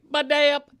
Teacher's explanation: Baday-up, B-A-D-A-Y-U-P, with the emphasis on the middle syllable